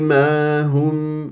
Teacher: وميم مظهره في الوصل يعني احذر ان تختفي لدى الواو والفاء